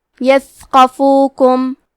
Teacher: ثا کی ادائیگی زبان کے سر اور اوپر والے دانتوں کے اندرونی کناروں سے ہے. کیونکہ یہاں ثا ساکن ہے تو ہمیں ثا کو ہمزے سے پڑھنا ہے.